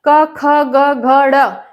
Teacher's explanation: इनका उच्चारण कहां से होता है कोमल तालव्य से होता है · तो जो कै वर्ग है, कै ख ग घ ड़, पूरा कै वर्ग क्या है? कंठ्य है।